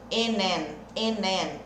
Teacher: Lembrando que esse I não é tão I, e sim um E.